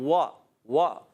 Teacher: वाव की अदागी होती है होठों की गोलाई से दोनों ओठ गोल करके